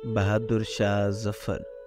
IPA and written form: bahɑːduɾ ʃɑːh zafaɾ (Bahadur Shah Zafar)